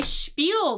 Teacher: it has like an sh sound and it is hidden you don't see it in the spelling